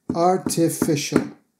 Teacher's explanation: Of course, artificial still has four syllables, four beats, but they are much faster.